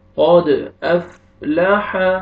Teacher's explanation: قد قلقلہ double sound آئے گا، قاف کو موٹا کر کے پڑھیں گے